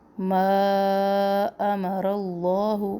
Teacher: مد ہے یہاں پر، اس کو ہم نے 3 الف کے برابر لمبا کرنا ہے